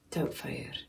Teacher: In Scottish, you've got like this really soft flutter of an R you can do, and it's really soothing the way he's got it.